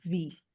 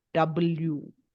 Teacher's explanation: When you say V, you bite your lips. So it's V. And when you say W, you round your lips. So W. Yeah.